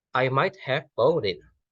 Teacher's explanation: Kemudian ketika di have itu sound atau mungkin suaranya itu masih berada di titik bawah atau dalam. Kemudian dilanjutkan dengan bought yang mana itu jadi inti dari tone unitnya, yaitu memiliki kenaikan di sana gitu. Jadi pertama turun kemudian naik.